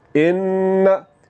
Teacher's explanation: इसको हमने जब पढ़ना है तो आवाज़ को नाक में ले जाकर फ़ौरन छोड़ देना है।